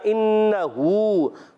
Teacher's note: ہا الٹا پیش ہو بھی ہے، ایک الف کھینچنا ہے ہا کو. ہوا یہاں پر نہیں کھینچیں گے.